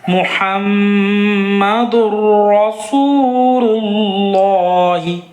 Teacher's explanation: लफ्ज़ अल्लाह के लाम को पुर करके पढ़ेंगे क्योंकि इस लफ्ज़ अल्लाह के लाम से पहले वाले हर्फ पे पेश है। ठीक है, देखें, मुहम्मदुर रसूलुल्लाह, मीम रा ज़ेर मिर, यहाँ जज़्म सुकून लगाए, यहाँ तशदीद है तो जज़्म सुकून वाले को छोड़कर तशदीद से मिलाएंगे।